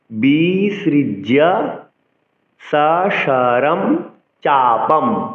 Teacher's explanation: অনুসার যখন কোনো শব্দের পরে থাকবে তখন অনুসার উচ্চারণ ময় হসন্ত করতে হবে, অর্থাৎ ময়ের অর্ধেক উচ্চারণ করতে হবে।